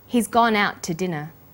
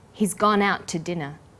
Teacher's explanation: When we link out, which is stressed, and to, which is unstressed, the final t sound in out is held slightly longer.